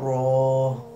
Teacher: र जुबान की करवट जब ऊपर वाले बाए तरफ की दाड़ो और मसूड़ों से लगे तो र अदा होता है